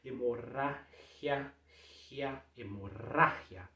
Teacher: O G com I vai ter um som de R mais um pouco mais seco.